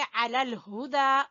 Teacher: हा को गले के आखिरी हिस्से से, और दाल को खींचेंगे खड़ी जबर की वजह से।